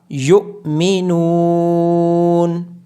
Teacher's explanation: نون کے بعد واو مدہ ہونے کی وجہ سے نون کو لمبا کیا جائے گا · یا کے بعد حمزہ ساکن ہونے کی وجہ سے یا کو جھٹکے کے ساتھ پڑھا جائے گا